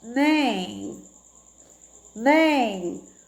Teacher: tem um sonzinho nasal, né? O som que sai pelo nariz